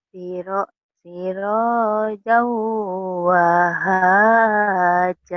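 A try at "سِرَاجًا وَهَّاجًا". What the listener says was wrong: Kalau kalau wahaja hanya cuma satu. Ini kan dua nih. Wah, wah, haja.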